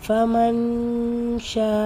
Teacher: பத்தா ஃபமா நூன் சுகூன் பெற்று அதுக்கு அடுத்து இருக்கிற இடத்துல ஷீன் வந்திருக்கு நூனை பாதியா மறைச்சு குன்னா செஞ்சு ஓதணும்